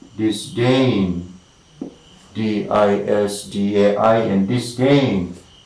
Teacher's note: the primary stress is falling on the second syllable, disdain.